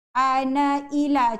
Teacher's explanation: kalau kita nak sambung ana dengan ila, na itu dibaca 1 harakat.